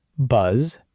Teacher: Notice how buzz vibrates at the end.